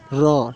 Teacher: र बोलने में जीवा को जो है कंपन करना पड़ता है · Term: प्रकंपित व्यंजन